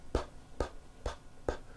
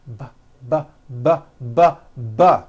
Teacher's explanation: So we say the P sound and the B sound are paired consonants. They are produced exactly the same way here in your mouth, but the P sound has no voicing and the B sound, b, b, does have voicing.